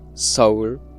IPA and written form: sʰʌuɭ (Seoul)